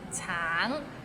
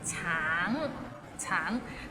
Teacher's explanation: Tang, it means orange, but some people might find it difficult because the end has a little ng, so it's a bit of nasal sound.